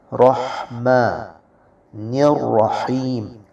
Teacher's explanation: حروف حلقی میں سے ہا ہے اور یہ وسط حلق سے نکلے گا